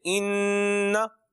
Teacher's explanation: और गुन्ना क्या है गुन्ना कि इसकी मिक दार क्या है एक अलिफ के बराबर आवाज नाक में रखना